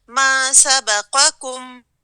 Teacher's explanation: قاف کو پر کریں, دوسرے کاف کو لائٹ پڑھیں